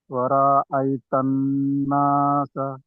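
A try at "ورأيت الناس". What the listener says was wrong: ఇక్కడ దీర్ఘం తీశారు మరి. ఉన్న ఎక్కువ చేయాలి. నూనె మీద ఉన్న ఎక్కువ చేయాలి.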